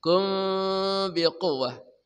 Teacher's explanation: Mim mati bertemu ba namanya ikhfa syafawi. Mimnya dibaca samar plus dengung.